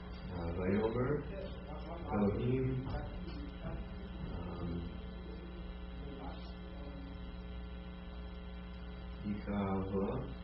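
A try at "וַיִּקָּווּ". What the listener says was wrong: That's a shurik on the end of there, right? Shurik is oo.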